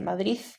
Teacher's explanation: la interdentalización de la de en posición implosiva